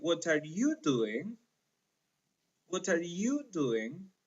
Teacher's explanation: the stress there is in you you is a function word in this case so since it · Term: accentual function of intonation